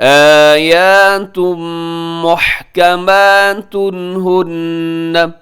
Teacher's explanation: آیات محکمات ہن، محکمات کے آخر میں تنوین ہے، تنوین کے بعد ہا ہے تو یہاں بھی کیا ہوگا؟ اظہار حلقی ہوگا۔ آپ تیزی سے پڑھیے گا، غنہ مت کیجیے گا یہاں پہ۔